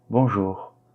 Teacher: Le R à la fin, il est légèrement prononcé.